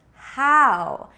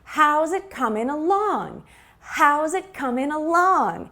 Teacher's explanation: so we stress the question word how